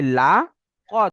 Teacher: খা নয়, লামটা বারিক, কফটা পুরো